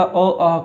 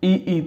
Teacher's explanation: अ कंठ्य ध्वनि है, ई तालु ध्वनि है